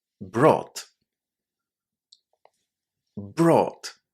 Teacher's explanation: It was the long O sound, or, and then T.